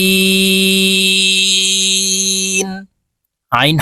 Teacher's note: আইন আইন হরফ হলকের মধ্যখান থেকে উচ্চারণ করতে হবে কারণ আইনের মাখরাজ হালুকের মধ্যখান থেকে হবে আইন তিন আলিফ টেনে